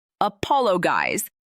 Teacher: Stress on the second syllable.